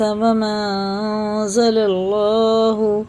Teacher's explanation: یہ مد منفصل ہے، اس کو 3 الف کے برابر کھینچ کے پڑھیں گے